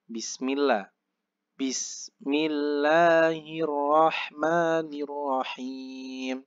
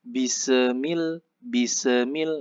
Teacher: Sa-nya itu huruf sa-nya itu nggak usah mantul. Jadi harus berhenti.